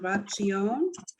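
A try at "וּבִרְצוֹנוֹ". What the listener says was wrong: there's no T. Ooh is one syllable. Uv is the first syllable. Well, sa. Sa. No, there's no E. Son. Uvratson.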